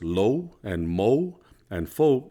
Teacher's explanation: when you put OU together, like in the words lo and mo and fo, it sounds like a W at the end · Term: diphthongs